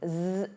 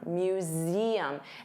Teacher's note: notice you have that voiced Z sound